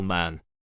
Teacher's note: M is a voiced bilabial nasal